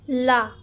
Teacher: दोनों जीभ के अगल बगल का जो भाग होता है वो हल्का सा मुड़ जाता है, इसीलिए इसे पार्श्विक वर्ड कहा जाता है ला को।